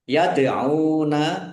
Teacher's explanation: mad thobi'i panjang dua harakat